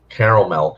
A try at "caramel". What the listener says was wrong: Caramel. It's not caramel. There's no extra A in there. It's like Caramel. No, it's caramel.